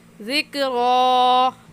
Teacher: खड़ी ज़बर है, एक अलिफ़ के बराबर खींच कर पढ़ेंगे